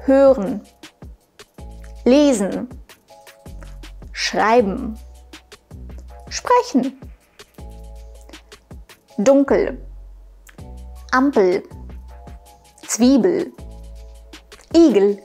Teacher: und el wird nicht ausgesprochen genau was passiert mit diesem e das e in vielen Endungen wird verschluckt also gar nicht ausgesprochen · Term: Reduzierungen